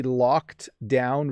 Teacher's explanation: when i say locked down really quickly you hardly hear that ed sound